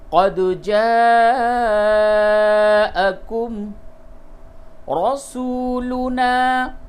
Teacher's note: مد متصل ہے، کھینچ کر کے پڑھیے اور دال پہ قلقلہ کیجئے